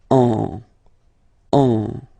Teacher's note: you will get what we call nasal, so it goes in your nose, and then you get the sound en.